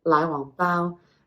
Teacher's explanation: And then another type of bun is your lai wang bao. Now again, this is the low rising lai, down again for wang, and then high tone bao.